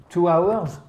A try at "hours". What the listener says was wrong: Hours. You do not pronounce the H for this very word. It's very specific to this word. You do not pronounce the H. It's an exception, Hours.